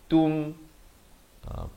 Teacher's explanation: Itu ta baris dhammah bunyi tu, bukan bunyi to. Jadi bertemu mim jadi tum.